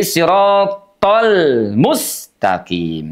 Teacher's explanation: huruf lamnya dibaca dengan suara mengalir walaupun tidak sebenarnya mengalir karena huruf lam itu sifatnya tawassut. Ah, bainiah antara dijeda dengan mengalir ya.